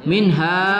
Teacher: nun sukun bertemu ha tidak kita dengungkan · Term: izhar halqi